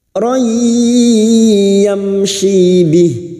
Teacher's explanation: Ya nun mim wawu termasuk huruf ini ya. Maka siap memasukkan dengan mendengung masuk ke huruf ya dan mendengung selama 3 harokat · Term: idgham bi gunnah